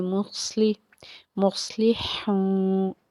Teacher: वाव साकिन से पीछे पेश है इसलिए हमने एक अलिफ के बराबर खींच के पढ़ना है। मुस्ली, मुस्लिहून, नून ज़बरना, मुस्लिहून, وقف کریں گے آگے 3 الف سے 5 الف کے برابر اتنی مقدار میں اس کو کھینچ کے پڑھیں گے مصلحون۔